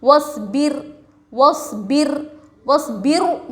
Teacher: رائے ساکنہ سے پہلے زیر رائے ساکنہ کو باریک پڑھیں گے